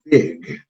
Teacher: no es una raspada, sino es una G de gato, ¿no? Como cuando decimos gato, porque si lo hacemos raspado, como la mayor parte de las personas lo pronuncia, vamos a decir big, big, pero no es así, ¿no?